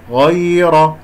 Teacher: غين مفخمة مرتبة ثانية لأنها مفتوحة، الراء مفخمة لأنها مفتوحة